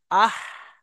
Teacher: গলার মাঝখান থেকে গলার মধ্যে হাওয়াটা কিছু বেরিয়ে আসে।